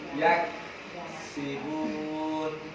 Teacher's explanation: Kaf mati, pangkal lidah yang keras.